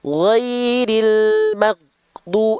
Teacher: Huruf ghain memiliki sifat yang disebut dengan rokhwah. Rokhwah artinya mengalir suara. Maka maghdu terus jalan huruf ghainnya.